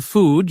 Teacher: For oo in food, your tongue is back and your lips are rounded